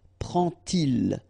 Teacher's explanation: you won't pronounce it like d to make the liaison, but you will pronounce it like t